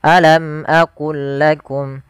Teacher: mim mati bertemu dengan hamzah yaitu suara mimnya harus dibaca dengan jelas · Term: Izhar syafawi